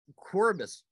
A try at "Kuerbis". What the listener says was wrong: Close. The one of the vowels is silent, so you can drop the U or drop the E. Kuerbis.